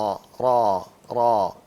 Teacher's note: ایک تو منہ کھول کے را کو پڑھتے ہیں، ہونٹوں کو گول نہیں کرتے · پیچھے سے زبان کو، پیچھے والا حصہ زبان کا اوپر کر لیتے ہیں تو را بن جاتا ہے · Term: موٹا